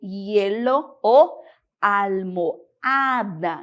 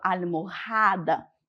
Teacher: la H não tiene sonido. É uma letra muda, ela não interfere no som da palavra.